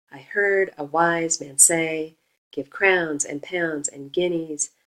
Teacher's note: unstress, stress, unstress, stress. And you hear it line after line. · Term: iambic trimeter